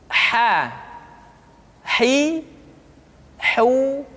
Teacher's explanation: huruf H dikeluarkan dari tengah-tengah tenggorokan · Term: huruf ha